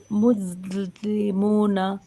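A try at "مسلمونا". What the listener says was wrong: হুম, ঠিক আছে, হয়েছে মোটামুটি।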